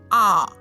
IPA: ɑ